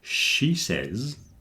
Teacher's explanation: Again, because you've got the three sounds very close together. Sh in she, then says begins with a s and finishes on a z.